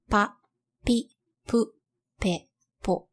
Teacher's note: This sound is almost identical to the English P sound, only less aspirated. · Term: bilabial consonants